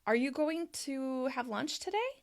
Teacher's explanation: And the reason that it rises when you say, "Are you going to have lunch today?" We raise our voice at the end, "today," and it ends high because we're checking for information and we're trying to confirm what we understand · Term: rising intonation